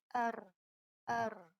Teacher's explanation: رو کی جو صفت ہے اس میں تکرار ہے، تکرار یعنی ریپیٹیشن